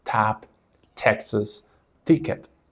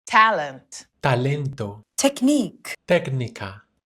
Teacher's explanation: In Spanish, the story is very different. When you say t, you just slightly bite the very tip of your tongue with your front teeth and then you produce a clean, dry sound, but there is no burst of air.